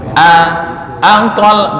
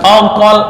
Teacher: Hamzah dibaca fathah itu tetap tarkik